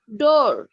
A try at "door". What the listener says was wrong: excellent কিছুটা ভুল হয়েছে যেমন আরটা আপনি মনে হচ্ছে উচ্চারণ করছিলেন সো এখানে ডোর না ইটস ডো ফো ওয়া order